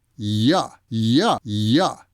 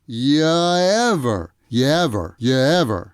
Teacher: you is usually unstressed and is pronounced as yeah yeah yeah you ever comes out sounding like yeah ever but